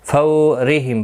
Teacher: واولین ہے، تھوڑا نرمی کے ساتھ کھینچ کر ادا کریں گے